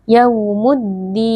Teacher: Di sini ada alif lam syamsiah karena ada alif lam yang bertemu dengan huruf dal. Cara membacanya lam sukunnya dileburkan ke dalam huruf dal